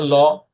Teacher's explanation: ল যখন ল বলছেন তখন জীবাটা উপরের যে তালু সে তালুতে লাগছে এবং দুই পাশ থেকে বাতাস বের হচ্ছে দুই পাশ থেকে বাতাস বের হচ্ছে বিধায় লকে আমরা বলছি কি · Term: পার্ষিক ধ্বনি, পার্শ্বিক ধ্বনি